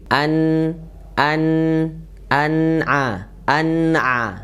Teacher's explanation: tadi Nun sudah kita bahas ya Nun makro dan sifatnya tipis di sini menunya dalam keadaan sukun ya dalam keadaan sukun maka ada yang mengalir sedikit